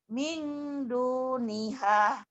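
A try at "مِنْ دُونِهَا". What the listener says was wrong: Jangan hah, jangan ada hahnya. Min duniha. Jangan hah. Min duniha.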